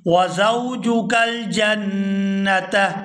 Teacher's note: یہاں جیم کو نون مشدد کے ساتھ ملائیں گے تو غنہ کریں گے، آواز ناک کے اندر روک کر رکھیں گے کچھ دیر کے لیے۔